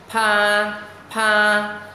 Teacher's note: luôn luôn để ý cái môi chúng ta phải ngậm môi lại, bật hơi ra